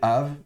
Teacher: spirant fricatif donc sans dagèche donc ça se prononcera v